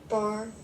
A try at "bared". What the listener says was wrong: Not bar. So if we add the D sound to the end, we get,